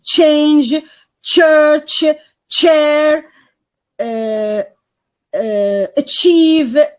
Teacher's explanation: initially the air is going to be completely blocked and it's going to be i mean gradually released cause in a kind of friction huh so you know that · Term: affricates